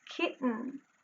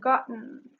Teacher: You probably noticed that the glottal stop is used instead of the t phoneme.